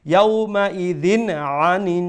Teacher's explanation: tanween there is letter ain which is the throat letter so we will pronounce the tanween with izhar without any nasal sound